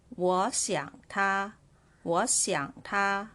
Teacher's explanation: So I changed the word 我 to second tone. 我想 and 他. So second, third, and first tone in here.